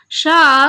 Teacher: शा का उच्चारण होता है तालु, यानी इसको जो बोला जाता है तालु से बोला जाता है। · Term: ऊष्म वर्ण